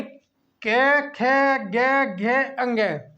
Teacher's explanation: ठीक है, यानी के, खे, गे, घे, अंगे। इनका जब हम उच्चारण करते हैं तो हमारी जो ध्वनि निकलती है वो हमारे कंठ से निकलती है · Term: कंठ्य